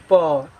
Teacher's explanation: जैसे हम लोग बोलते हैं प, बिना ओठ खोले आप लोग प नहीं बोल सकते हैं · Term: ओट से, ओष्ठ